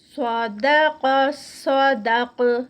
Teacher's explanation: جب روکیں گے تب بھی وہ موٹا ہی ہوگا. صدق صاد ہیوی, قاف ہیوی. صدق صدق اور قاف پہ اینڈ پہ آواز پلٹے گی اسٹاپ پہ تو قلقلہ ہوگا.